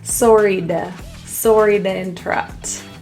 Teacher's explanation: notice the T turns to a quick little flap T sound. It's a D.